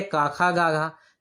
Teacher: काखा गाघा जो है कंठ से बोला जाने वाली ध्वनि है